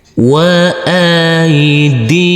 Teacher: Huruf alif yang berfathah a bertemu dengan huruf ya sukun kita lembutkan karena ini adalah bacaan lain. Huruf dal yang berkasrah i bertemu dengan huruf ya sukun, kita baca panjang dengan panjang dua harakat. Huruf mim sukun kita baca dengan huruf m.